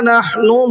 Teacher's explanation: نحن کا ہا کو تھوڑا سا حلق سے نکالنا ہے